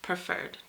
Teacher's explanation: a two syllable word with the stress on the second syllable